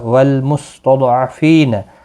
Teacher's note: ضاد حروف مستعلیہ ہے، پر پڑھا جائے گا.